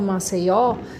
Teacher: essa palavra dá pra ver bem certinho que o O vai ser o mais forte, porque senão eu falava Maceió.